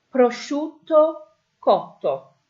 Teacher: SCI sound followed by a vowel. Okay, so we're not pronouncing the I, but that is a sh sound.